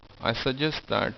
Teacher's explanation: because there are two hard sounds, one after the other, this T and this T, you only need to pronounce one T. In that case, you're gonna say, I suggest that, where you just said suggest, that's all you said.